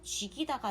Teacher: 먼저 연음이 돼서 죽이다가 된 다음에 뒤에 있는 이모음에 의해서 쥐기다가 됩니다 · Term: 이모음 역행 동화